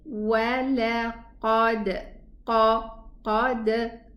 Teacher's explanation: The qaf is elevated, but the waw is not and the lam is not. Neither is the dal.